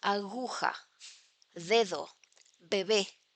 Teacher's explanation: in Spanish, b, d, g, the voice plosives, can become fricatives when they are between vowel sounds, as in these examples.